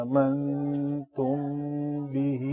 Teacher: میم ساکن کے بعد با ہے تو اخفاء شفوی، مد صلہ صغرا ہے.